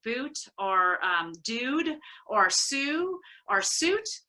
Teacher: they're actually being pronounced with the tongue much fronter in the mouth than it was a hundred years ago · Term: back vowel fronting